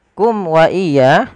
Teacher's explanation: Di sini ada mim mati bertemu dengan huruf wau di mana kita namakan dengan idhar syafawi suara mimnya dijelaskan